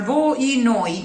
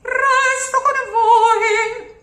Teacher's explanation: 2 syllables and the O is closed. So it's never oi.